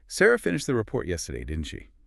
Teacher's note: The rising tone there means, I'm not sure. I need you to confirm it for me.